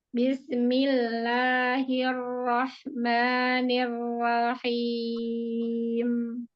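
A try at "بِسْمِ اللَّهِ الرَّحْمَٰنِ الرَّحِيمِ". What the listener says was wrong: Buka lagi rahangnya. Jangan samping. Itu ke samping. Dorong ke depan. Dorong.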